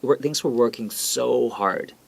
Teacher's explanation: they're trying to emphasize that they're working hard the so we will make it longer we will elongate it